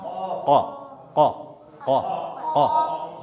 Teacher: ज़ुबान की जड़ को ऊपर के तालों से लगाकर क़ाफ अदा होता है